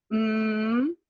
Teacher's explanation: have here are your nasal sounds and nasal basically means you you close your mouth and the air comes through your nose basically you're humming with your nose